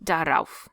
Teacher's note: I overemphasize the R, of course. The buffer R, because A is a vowel.